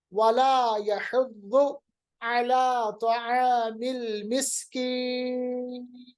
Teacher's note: इस वक्फ की सूरत में नून को हम साकिन बनाएंगे